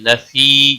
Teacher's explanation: لفی یا مدہ ہے ایک الف کے برابر کھینچ کر پڑھیں گے